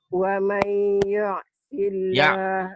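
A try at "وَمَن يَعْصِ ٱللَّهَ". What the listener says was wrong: Bukan yu, ya. Wa may ya. Ya.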